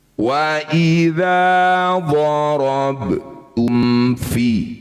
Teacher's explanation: Bunyi mim baca jelas. Selesaikan bunyi mim dulu dengan cara merapatkan bibir tanpa dengung baru pindah ke huruf berikutnya. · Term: izhar syafawi